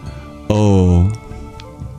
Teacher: The sandhi of ah and u is the vowel that's halfway between them, o.